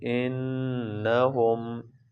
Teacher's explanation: نون پر غنہ کریں گے